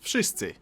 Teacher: W in wszyscy should sound like W, wódka, wojna, but it seems to soften up to an F